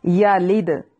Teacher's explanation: دال پہ قلقلہ ہوگا، ہلا کر پڑھیں گے